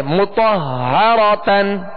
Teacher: تشدید ہے. ہا حرف مشدد ہے لہذا دو مرتبہ پڑھیں گے